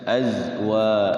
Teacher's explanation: Zainya jangan dipantulkan. Azwa. Kalau jim baru dipantulkan.